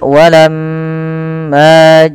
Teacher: usahakan kita menahan daripada bunyi suara mim karena di sini dilihat mimnya berharakat tasdid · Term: gunah